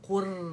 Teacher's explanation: रॉ मोटी होगी because रॉ सुकून से पहले हमारे पास दमा आ रहा है